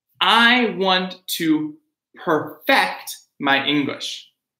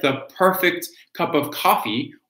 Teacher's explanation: So perfect, right? Stressing the beginning is the adjective, perfect. The verb, perfect, okay?